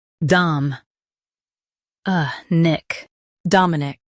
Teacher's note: Stress Dom and keep uh light. End with a clear nic.